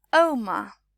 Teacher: You can hear my voice dropping at the end.